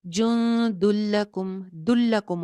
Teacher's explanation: اب یہاں پہ کیا ہوگا, جو تنوین کے اندر چھپا ہوا نون ہے وہ ختم ہو جائے گا. ٹھیک ہے, نون نہیں پڑھیں گے اور دال کی ایک پیش کو لام سے جوڑ دیں گے. جن دلکم, دلکم ہو جائے گا.